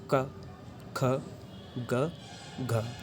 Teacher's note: अपने जीवा को जो जीवा मूल है, जहाँ से जीवा हमारी शुरू हुई है, उसको थोड़ा उसी के ऊपर लगा के करते हैं